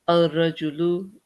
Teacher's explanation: the lamb becomes silent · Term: sun letter